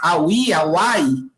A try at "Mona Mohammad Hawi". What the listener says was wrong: Olha, é Mona Mohammad Hawi. Em árabe, o H ele é pronunciado. Nesse caso, é um H bem brando, mas ele é pronunciado.